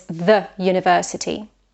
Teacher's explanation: university starts with a vowel letter, U, but it actually starts with a consonant sound, yod